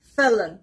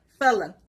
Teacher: The stress is on the first part, felon.